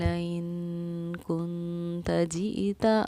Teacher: میں نے اس ان کے نون پر اخفا کیا یعنی ٹھہراؤ کیا